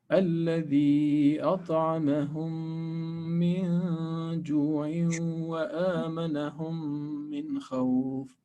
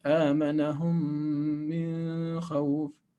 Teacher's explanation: you have to stop once you reach the noon, recite it with just simple noon quality and switch to the next sound. Okay, there is no lengthening of noon like in this previous one. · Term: Idhar